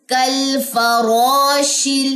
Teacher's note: یہ را ہم نے موٹی پڑھی زبر کی وجہ سے